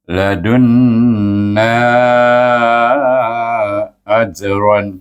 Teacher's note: Ladunna satu kalimah, ajran satu kalimah. Maka kita baca dengan mat jaiz munfasil 4 atau 5 harakat.